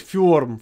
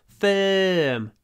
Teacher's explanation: It's a double sound. Remember, the sound is pronounced with lips forward, mouth open, and the middle of the tongue pushed towards the top teeth.